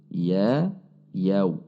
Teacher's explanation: Saat masuk ke wawu sukun, yaw, bibir kita membulat atau memonyong karena sifatnya huruf wawu adalah membulatkan bibir